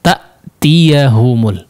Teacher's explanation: Sifat syiddah yang memang karakternya adalah putus ya, aliran suaranya terputus karena memang huruf hamzah dia merapatkan antara kedua sisi makhrajnya, yaitu di pita suara, tepat di pita suara atau atasnya sedikit di pangkal tenggorokan.